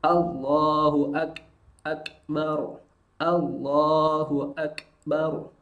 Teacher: Bunyi sukun dari huruf kaf adalah karena huruf kaf memiliki sifat syiddah, tertahan suaranya, tapi dia memiliki sifat hamas, mengalir nafasnya. Maka mengalir nafas dalam huruf kaf itu tidak seperti huruf sin yang mengalir deras. · Di sini kita lihat ada proses tertahannya suara, lalu ada proses percikan nafas. Percikan nafas dalam kaf sukun itu tidak terlalu banyak. Jadi bunyinya jangan k, bukan.